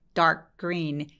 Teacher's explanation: dark 하면서 혀가 K 포지션으로 가 있습니다. 그러고 나서 dark 라고 소리를 내지 않고 dark green 이라고 연결해서 소리를 내게 되죠.